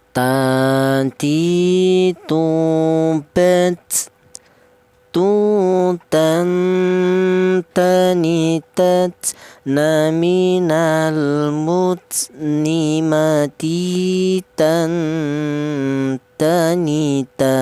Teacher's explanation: Ghirubel Ruhon Ghanir Naminal Murni Maghiran Ghanira. Kemudian huruf ta ini keluarnya huruf berasal dari ujung lidah menyentuh pangkal gigi seri atas